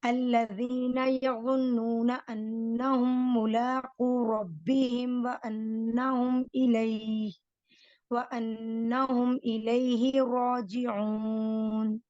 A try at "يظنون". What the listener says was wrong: یظنون اس کی جو غنہ ہے اس کو تھوڑا سا مزید بڑھا دیں، پرومیننٹ کر دیں.